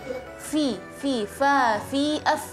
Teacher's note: Jadi melafalkan harful fa adalah dengan cara ujung gigi seri atas sama bibir bawah yang bagian basah ya, harus disentuh. Kalau kita nggak sentuh, hanya mendekati saja, itu nggak keluar fa, harus ditekan sedikit fa, makanya keluar angin fi, fa, fi, af.